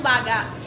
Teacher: ang pagsabi ng baga ay mabagal at sarado ang dulong patinig ng salita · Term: malumi